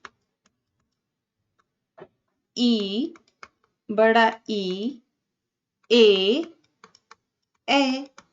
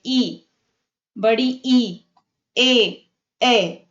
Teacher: उच्चारण में जीभ का अग्रभाग काम करता है। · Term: अग्र स्वर